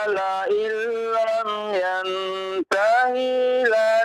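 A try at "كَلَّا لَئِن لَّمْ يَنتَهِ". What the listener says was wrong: Jangan dipanjangkan. Yang tahinya jangan dipanjangkan. Kalla jangan dipanjangkan. Jangan dipanjangkan ya. Kalla la illam yantahi lanasfa'am. Yang perlu diperhatikan huruf kafnya ya, Pak ya. Huruf kaf jangan dibawa-bawa kepada qalqalah, ya.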